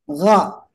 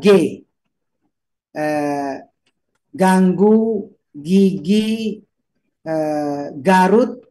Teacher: ini menggunakan tenggorokan ya, sahabat, bukan menggunakan lidah. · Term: ghin